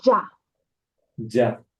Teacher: temos um acento agudo, então vai ser um sonido aberto